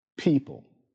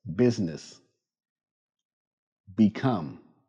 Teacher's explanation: For the P sound, release a small puff of air. Practice. People. For the B sound, use your voice.